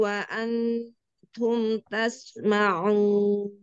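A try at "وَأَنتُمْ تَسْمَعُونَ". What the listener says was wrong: Ya, jangan langsung ketak. Wa'antum. Gak wa'antum. Jadi kalau langsung ketak, jadinya izhar. Wa'antum. Ngambang ujung lidahnya, tarik ke belakang. Jangan ke depan. Kalau ke depan, ngalangin. Wa'antum.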